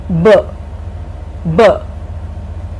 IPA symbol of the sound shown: b